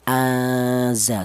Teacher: Maka huruf za ini termasuk hurufnya ikhfa. Jadi apabila ada nun mati berjumpa dengan huruf za ini dibaca ikhfa atau dibaca samar.